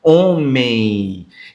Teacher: Homem. Então, na pronúncia, o som traz o I desse M, homem, ó, o I no final. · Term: ditongo nasal